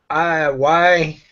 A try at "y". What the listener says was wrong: So the Y, you just pronounce it like the letter E. Y.